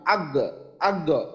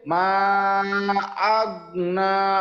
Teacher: মা আগনা, মানে গয়নের আওয়াজটা একটু চালু রাখতে হবে, শক্ত করে গয়নটাকে ধরা যাবে না। যদিও যজম আছে, শক্ত করে না ধরে একটু স্লাইড করে দিতে হবে।